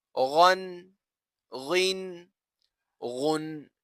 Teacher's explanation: غین بھی حروف مستعلیہ میں سے ہے، اسے بھی پر پڑھا جاتا ہے